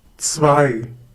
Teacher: The German consonant C is pronounced like the English TS sound that is found at the end of words such as mats, pots